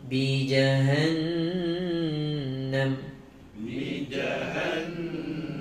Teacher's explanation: Iklab adalah nun mati atau tanwin jumpa dengan ba. Maka kat sini tanwin itu ditukarkan menjadi huruf mim, mim kecil. · jahannam wajibul gunnah, wajib dengung dengan kadar 2 harakat